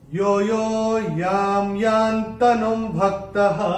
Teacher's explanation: अनुस्वार के बाद जब य आएगा तो अनुस्वार का उच्चारण होगा म